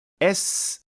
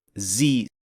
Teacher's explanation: Buni tomog'ingizni qo'lingiz bilan ushlab, sinab ko'rishingiz ham mumkin. Masalan, Z deganda tomoqda titrash seziladi. Lekin S deganda esa hech qanday titrash bo'lmaydi.